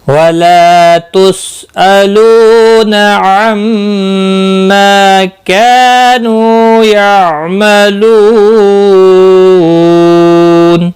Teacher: مد العارض وقفی ہوگا، 3 سے 5 الف کے برابر کھینچ کر وقف کریں گے